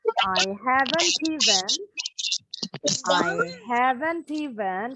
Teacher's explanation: Kalau orang Inggris biasanya T-nya suka bunyi nih kalau disambung ya. Karena disambung dengan bunyi berikutnya.